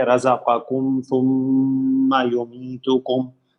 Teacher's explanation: ثم میں پھر میم پہ تشدید ہے، زیادہ غنہ ہوگا · ثم رزقکم، میم ساکن ہے، میم ساکن کے بعد میم اور با کے علاوہ کوئی حرف آئے گا تو اظہار شفوی ہوگا، اس لیے میم کا اظہار کریں گے